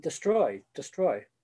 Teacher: it's not dear it's a schwa